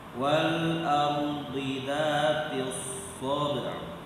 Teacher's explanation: Wal ardi tebal kenapa? Karena huruf sebelumnya berharokat fathah. Ro sukun sebelumnya fathah.